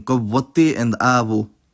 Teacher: [ʋ] becomes [β̞ʷ] next to rounded vowels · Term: allophone